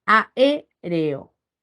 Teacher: Esa es la regla al separar digo a r o y al pronunciar enfatizo sobre la sílaba e que es la antepenúl por esa razón Tilo sobre la vocal